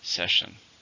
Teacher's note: How many syllables are in the word session? 2. Stress on the first.